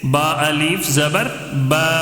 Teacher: جی الف مدہ ہوگا. ٹھیک ہے, الف مد کو کیسے پڑھنا ہے؟ ایک الف کھینچ کر پڑھیں گے